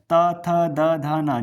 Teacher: जैसे ही आप बोलोगे तो आप फील करोगे कि आपकी जो जीवा है यानी जीभ वो दांत को टच कर रही है।